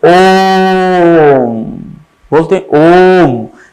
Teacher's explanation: यानी ओ के बाद क्या है, 3 गुना खिंचावट है इन स्वरों में